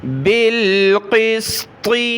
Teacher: قاف اور طا کو موٹا پڑھنا ہے